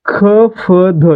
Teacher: ख फ ध यांचा उच्चार करताना क सोबत ह, प सोबत ह आणि द सोबत ह यांचा उच्चार होतोय म्हणून यांना काय म्हणायचं महाप्राण म्हणायचं.